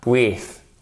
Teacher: vous faites ripper la langue contre les dents du haut au moment où elle sort et la langue, elle sort. Ce qui produit un son plus fort. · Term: hard TH